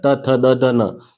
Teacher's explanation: जो त वर्ग होता है, त थ द द न, तो त थ द द न अपन जो बोलते हैं, तो अपनी जीभ जो होती है वो दांत से, दांत को स्पर्श करती है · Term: दंत्य